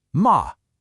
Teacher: It falls, and then it rises. So your voice starts kind of low, it dips down even lower, and then it comes back up. · So your voice starts kind of low, it dips down even lower, and then it comes back up. It's almost like you're drawing a little check mark with your voice. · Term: third tone, the third tone